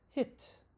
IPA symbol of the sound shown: ɪ